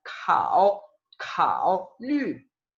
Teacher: la K se pronuncia como esa misma K, como esa G, como ese sonido que tiene la G en mandarín, pero con aire, K, K. Por ejemplo, con la E, G, G, esa es la G, y con la K es K, K.